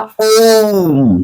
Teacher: ओम मतलब ओ स्वर है उसके तीन गुना समय लग रहा है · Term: प्लु स्वर